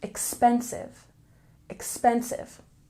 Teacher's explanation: we have a stress on the second syllable